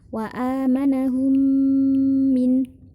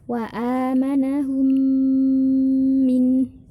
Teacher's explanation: mim harokat apapun itu yang penting minum sukun bertemu dengan mim dibacanya dengung 2-3 harokat